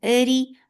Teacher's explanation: Eri for kasra, give e sound, and ra will be light here because whenever ra is with kasra it is light